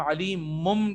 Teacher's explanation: اقلاب کا ایک ہی حرف ہوتا ہے با, اور نون ساکن اور تنوین کے بعد اگر حرف با آ جائے، نون ساکن اور تنوین یا پھر تنوین دونوں کے بعد اگر حرف با آ جائے تو ہم اس لفظ کو بدل کر پہلے میم پڑھتے ہیں اور پھر اس کو ادا کرتے ہیں. جیسے علی مم بھی، علی من ہم نہیں کہتے، ہم علی مم کہتے ہیں اور پھر با کو ادا کرتے ہیں تو علی مم بذات الصدور ہو جاتا ہے.